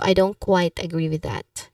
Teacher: So you stress on quite agree here. You emphasize that there's a partial lack of agreement rather than a complete opposition.